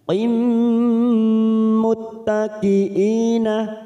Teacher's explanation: siap masuk pada huruf mim, kita tekan 3 ketuk, namanya bacaan idgham bi gunnah